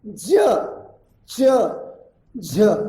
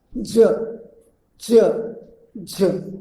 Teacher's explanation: मराठी में वह दंत तालव्य है, यानी तालु के साथ साथ वो दंत को, दांत को भी, ऊपर के दांत को भी स्पर्श करता है।